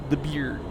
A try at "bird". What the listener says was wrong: The beard. I think you're just saying beard. So you're sort of elongated beard with a little flourish. Beard.